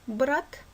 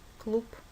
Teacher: Буква Б произносится как Б – брат или П – клуб.